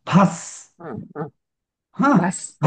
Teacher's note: जोडाक्षराचा जो आघात असतो ना, तो पहिल्या अक्षराला येतो, आधीच्या अक्षरात येतो.